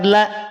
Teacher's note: asal muasalnya dua harakat tetapi karena bertemu dengan Hamzah di kalimat yang lain kalimatnya terpisah maka lam menjadi panjang 4 atau lima harakat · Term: Mad Jaiz munfasil